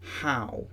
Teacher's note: the first part of the diphthong is usually much longer and louder than the second, at least in RP English